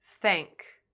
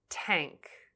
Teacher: don't stop the airflow between your tongue and the top front teeth. Otherwise, it may sound like t.